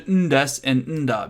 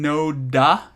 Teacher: This pattern, the no des, the no da, is regularly slurred to ndes and nda because going no da, your tongue is in the same place with n and da.